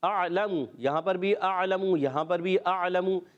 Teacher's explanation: اعلم میں حمزہ کو عین سے ملانا ہے کیونکہ یہ الف نہیں حمزہ ہے